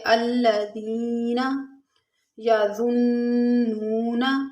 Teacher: خاشعین پر ہم نے وقف کیا، الذین، دال جو ہے یہ نرمی والے حروف میں سے ہے اور یا ساکن اس سے پہلے زیر یا مدہ ہے، تھوڑا سا کھینچ کے پڑھیں گے